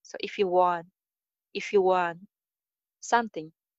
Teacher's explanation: Want ending T sound jo hai wo N ke saath aa jaane ki wajah se skip ho jayega.